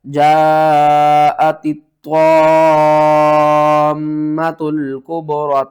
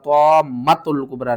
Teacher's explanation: جاءت الطامۃ الکبریٰ, طامۃ الکبریٰ نہیں کرنا, طا کو کھینچنا ہے اور کھینچ کے میم کے ساتھ ملا کر پڑھنا ہے